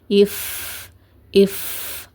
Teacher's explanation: ஃபேக்கு உங்களோட உதடுகளை எப்படி வைக்கணும்னா, மேற்பற்கள் இருக்குது பார்த்தீங்களா, மேற்பற்களுடைய ஓரங்களை உங்களுடைய கீழ் உதட்டோடைய ஈரப்பகுதியில் வச்சிங்கன்னா உங்களுக்கு ஃபேவோட சவுண்ட் கரெக்டாக கேட்கும். அண்ட் காற்று வெளியேறதையும் உங்களால் ஃபீல் பண்ண முடியும்.